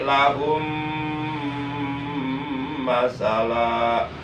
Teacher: mim sukun atau mim mati bertemu dengan huruf mim maka mim sukunnya wajib digolongkan atau dimasukkan ke dalam huruf mim yang ada di hadapannya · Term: idgham mutamatsilain